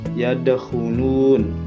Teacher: Kalimatnya yaitu yang ada di ayat kedua yadkhulun. Di sini huruf dalnya dibaca sedikit qalqalah ya, yadkhulun. Jadi agak memantul. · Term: qalqalah sughra